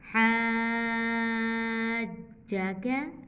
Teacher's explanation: जीम के ऊपर शद आई है, जीम को हमने डबल पढ़ा इसको, जीम को दबाया हमने। हा ज़बर अलिफ मद जीम हाज, जीम पेश वाव जू हाजू, काफ ज़बर का हाजू का।